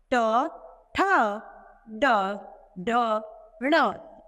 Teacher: इनका उच्चारण हम मूर्धा के द्वारा करते हैं।